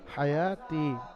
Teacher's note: আলিফ মাদ্দা এক আলিফ পরিমাণ ইয়া টান দিয়ে পড়তে হবে।